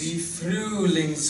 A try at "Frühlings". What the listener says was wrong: So it's not quite fru. When you have the out, it's E through U lips. So it needs a little more E in it. So say Freelings. Freelings. Freelings. So it's just a little more E on your tongue and a little lip on your lip.